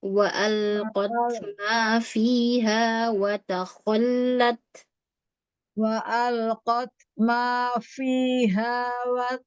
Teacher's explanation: fiha menggunakan gigi dari atas ya ke bibir bawah